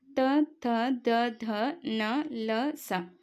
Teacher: ಇವುಗಳನ್ನ ನಾವು ಹಲ್ಲುಗಳ ಸಹಾಯದಿಂದ ಉಚ್ಚಾರ ಮಾಡ್ತೀವಿ · ಇವುಗಳನ್ನು ನಾವು ಹಲ್ಲುಗಳ ಸಹಾಯದಿಂದ ಉಚ್ಚಾರ ಮಾಡುತ್ತೀವಿ. ಹಲ್ಲುಗಳ ಸಹಾಯದಿಂದ ಹುಟ್ಟುತ್ತವಾದ್ದರಿಂದ ಇವುಗಳನ್ನು ದಂತ್ಯವರ್ಣಗಳು ಅಂತ ಕರಿತೀವಿ.